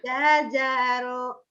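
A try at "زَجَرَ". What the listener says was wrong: Ja keras orang Sunda tuh mau jajaro. Irapu ini jazaro gitu. Jazaro. Ja keras dulu. Jazaro, jazaro. Jazaro. Jazaro. Jazaro. Jazaro. Jazaro.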